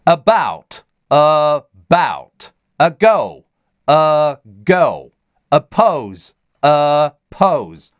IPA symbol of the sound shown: ə